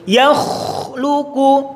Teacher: Ketika sukun juga nampak betul ngoroknya dan nafasnya terlepas, juga suaranya tetap terdengar.